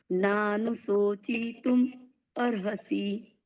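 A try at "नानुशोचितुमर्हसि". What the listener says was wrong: હવે શો છે ને એમાં શ શંકર નો શ છે. ના, સસલા નો બોલવાનો નથી, શંકર નો છે. શંકર નો બોલવાનો.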